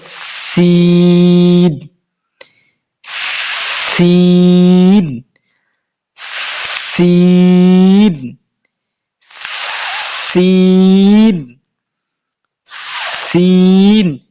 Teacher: যখন সিন বলবেন তখন মুখ ছড়ায়া যাবে এবং হালকা বাতাস বাইর হবে